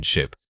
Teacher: Saying this word requires a quick, clipped sound. The key is that the short I vowel should feel tight and brief in your mouth. Don't let it stretch out, it needs to be punchy like a flash of light.